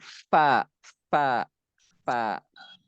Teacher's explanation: Ujung Pak gigi gitu. ujung gigi atas nempel sama bibir bawah.